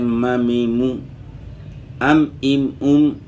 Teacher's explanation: تو آپ نے نوٹ کر لیا ہے کہ میم میں جو ہے نا ہونٹوں کا جو خشکی والا حصہ ہے وہ آپس میں لگ رہا ہے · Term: اطباق شفتین